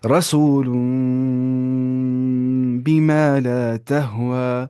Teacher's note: دیکھیے اب دیکھیے یہاں پہ تنوین کے بعد کیا آ رہا ہے با، تو یہاں پہ کیا کر رہے ہیں کام، یہاں پہ نون کی آواز کو میم، یہاں پہ نون کو میم سے ملا دینا ہے